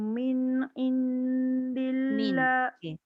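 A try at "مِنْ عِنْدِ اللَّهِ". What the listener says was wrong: Saya dengar macam dia melekat lidah tu. Jangan lekat.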